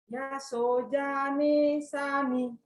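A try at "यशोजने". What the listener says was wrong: You went back now. Don't stay on the akara. Yashojane sani. Yashojane sani. I want you to be careful with the akara. So you're staying too long on the akara. That's why it falls off. So ya sho ja ne. Ya sho ja ne sani.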